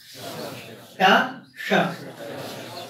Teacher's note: जहां पर टा बोलने में जिह्वा का स्पर्श हो रहा है, मूर्धन्य स्थान बोलते हैं, वहीं से श बोलिए, टा श। हाँ, अब वो श है बीच में कृष्ण में।